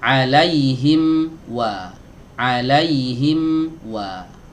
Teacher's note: huruf mim masuk ke huruf berikutnya yaitu huruf wawu Ya baik huruf wawu keluar dari dua bibir tempatnya sama seperti Huruf mim